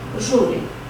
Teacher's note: Júri, escreve-se com acento, que termina em U, mas em vez de ter a última sílaba tônica, tem a penúltima